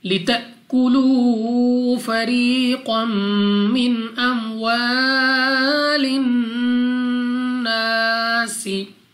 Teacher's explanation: نون مشدد غنہ کر کے پڑھیں گے۔ الف سے پہلے زبر، الف مدہ 2 سیکنڈ تک کھینچ کر لمبا کر کے پڑھنا ہے، اور سین کو سیٹی والی آواز کے ساتھ پڑھا جائے گا۔